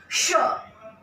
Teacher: श को बोलने के लिए हमें अपनी जीभ को थोड़ा सा मोड़ना पड़ता है, इसीलिए इसको हम मूर्धन्य श कहते हैं,